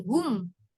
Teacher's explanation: Mim sukunnya itu taruh di depannya ha, di depannya hum. Jadi jangan ditarik lagi. Bukan huem, bukan huem, tapi hum. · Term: mim yang sukun